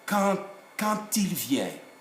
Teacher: this D becomes a T.